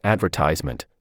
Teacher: in the word advertisement the stress is on the third syllable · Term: primary stress